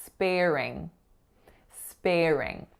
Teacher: conceptualize that there is an R between spare and ring that's really smoothing it out. And there's an R flavor to the air, there's an R flavor to that consonant R, but really think of combining those together smoothly with a linking R.